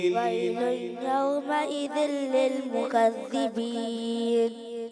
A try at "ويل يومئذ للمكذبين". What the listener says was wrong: غنہ ہی ختم کر دیا آپ نے تو. ويل يومئذ للمكذبين ويل يومئذ للمكذبين